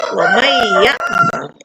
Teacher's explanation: Diberikan tasdid karena ada hukum idgham, ya. Tidak diberikan tasdid pun bacanya tetap seperti mentasdidkan. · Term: tasdid hukum